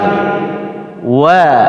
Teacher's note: Tetapi ketika merenggangkan antara bibir atas bibir bawah, jangan sampai ada tiupan angin. Tidak boleh, karena waw bukan huruf hams, tidak mengeluarkan angin.